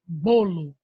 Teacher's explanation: Como, por exemplo, a palavrinha bolo. A palavrinha bolo, a sílaba mais forte é o bo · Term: paroxítona